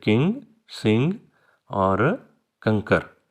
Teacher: आपकी जो टंग है वो पीछे जाएगी व्हीलर पार्ट की तरफ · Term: व्हीलर नेजल